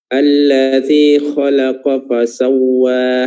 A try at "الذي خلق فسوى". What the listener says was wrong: Kurang tebal ya. Khalaqa.